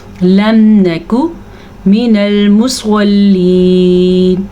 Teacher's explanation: واو مدہ ادا کریں گے. لم نکو کو کاف میں بالکل لمبا نہیں کریں گے